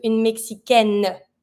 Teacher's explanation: Keep in mind, every time that you have the final I at the end of a noun, you always have to pronounce the consonant that's just before that I. So here, when you have une Mexicaine, feminine, you're going to have to pronounce your N.